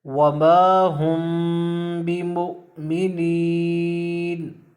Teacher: میم ساکن کے بعد اگر حرف با آ جائے تو غنہ کے ساتھ اخفاء کیا جائے گا، یعنی غنہ بھی کریں گے اور اس میم ساکن کو چھپا کے بھی پڑھیں گے